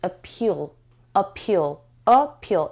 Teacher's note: It has two syllables and the stress is on the second syllable. Appeal. And this sound is schwa sound.